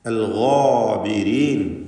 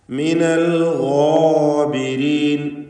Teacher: ഗൈനിനെയും അതിൻ്റെ ദീർഘാക്ഷരമായ അലിഫിനെയും തഫ്ഖീം ചെയ്ത് സ്വരഭാരത്തോടെ ഉച്ചരിക്കണം